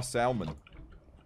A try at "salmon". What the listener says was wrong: It's salmon. You don't pronounce the L.